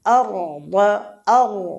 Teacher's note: এখানে রটা মোটা হবে, রয়ে সাকিন, ডান দিকের হরফ বাগের হরফে ফাতাহা বা জবর রয়েছে, এই জন্যে এই আর রটা কী হবে, মোটা হবে।